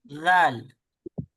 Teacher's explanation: जबान की नोक दांतों के किनारे से लगकर जाल अदा होता है। · जबान की नोक को सामने के ऊपर के दोनों दांतों के किनारे से जब हम लगाएंगे तो हमारा जाल होगा